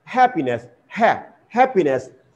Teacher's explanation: so here stress falls on the first syllable ha not happiness it will stress this one happiness okay then